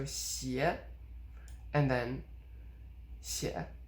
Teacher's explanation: because the second 写 is a third tone, the first one has tone sandhi and it becomes rising